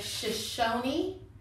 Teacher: Yeah, that E is not silent like in our language. They actually pronounce it with a long E.